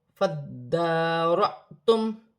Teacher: حمزہ ساکن ہے، جھٹکے کے ساتھ ادا کیا جائے گا